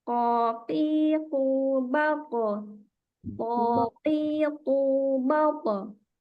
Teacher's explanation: Di huruf qaf dan to ketika dia qalqalah, nah dia qalqalahnya seperti fathah tapi tidak sempurna fathah, maksudnya sepertiga fathahnya. Jadi tebal.